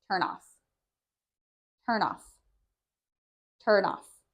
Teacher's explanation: And this one is interesting because when you say it, it almost sounds like the N moves to the word off